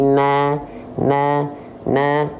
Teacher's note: cara penyempurnaan huruf tipis yang berharakat fathah dengan cara BM SS buka mulut sambil senyum maka enggak dibaca no tapi na na na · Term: huruf yang tipis